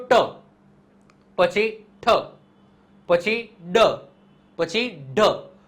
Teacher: જીભ છે આ દાંતનો જસ્ટ ઉપરના જે સ્નાયુઓ છે ત્યાં સ્પર્શ કરે છે એના કારણે આને મૂળધન્ય કહેવામાં આવે છે શું કહેવામાં આવે મૂળધન્ય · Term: મૂર્ધન્ય